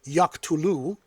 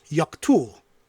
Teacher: two different prefix verbs, distinguished only by a final vowel. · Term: Apocope